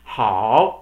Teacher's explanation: you can see that it's um starting a little higher and then it's dropping a lot and then it goes up really a lot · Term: third tone